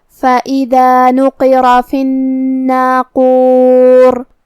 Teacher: قاف کو ہم زبان کے جڑ اور تالو کے نرم حصے سے ادا کریں گے. قاف حروف التفخیم میں سے بھی ہے تو ہمیں یہ حرف کو بھاری آواز میں پڑھنا ہے.